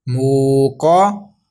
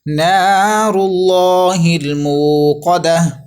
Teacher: قوف حرف مستعلیہ پر کر کے پڑھیے موٹی آواز میں